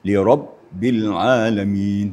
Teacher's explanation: Huruf ba itu sifatnya adalah eh syiddah. Sidda artinya suara terputus ya waktu membacanya tertahan ya suara tertahan apabila membaca ba